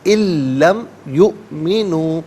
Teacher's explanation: یؤمنو میں حمزہ ساکن ہے، اسے جھٹکے کے ساتھ پڑھا جائے گا